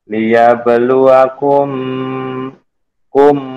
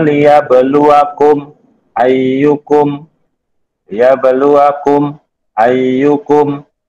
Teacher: Tidak ada samar, tidak ada dengung, harus jelas. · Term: izhar syafawi